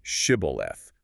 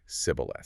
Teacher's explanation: But the Ephraimites had a different regional dialect. They couldn't pronounce the sh sound. The text says he could not frame to pronounce it right, so he would say sibboleth.